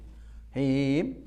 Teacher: Di samping itu mim dan nun itu baik mati, hidup maupun dalam keadaan izhar, idgham, semuanya itu ada gunnahnya. Gunnah satu harokat saja. Nggak boleh nggak ada gunnahnya sama sekali.